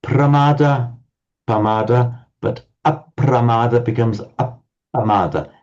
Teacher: Pali can't quite manage the pra, but it certainly manages the double pa.